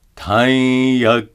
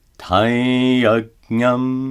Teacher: Notice that the anuswara is pronounced as a nasalized ya.